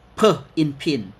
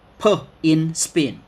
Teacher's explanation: In pin the P has aspiration X-ray. In spin the P is not strongly aspirated.